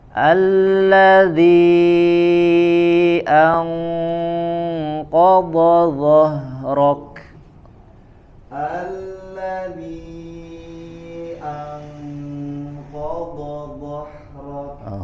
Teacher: Nah, huruf dho-nya jangan zo ya. Tempelkan ujung lidah ke ujung gigi seri atas. Dho seperti digigit.